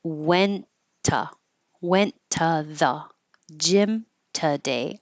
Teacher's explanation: I'm just going to make one t sound